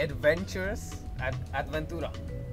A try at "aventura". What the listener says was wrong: Without the D, aventura. Say, it's a adventure, okay, es una aventura.